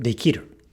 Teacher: The ki is voiced here because it is preceding a voiced consonant, an R